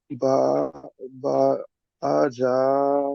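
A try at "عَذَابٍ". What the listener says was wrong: বা কেন হচ্ছে বা জের বি আজাবিন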